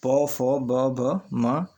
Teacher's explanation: इनके उच्चारण में दोनों ओंठों द्वारा अवरोध होता है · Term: ओष्ठ व्यंजन